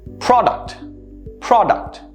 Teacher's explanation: notice how the uh sound replaces the u there